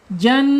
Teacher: Jan gunah ya. Nun bertasyid dibaca gunah. Ditahan dulu ya jangan buru-buru. Ditahan dua sampai harakat.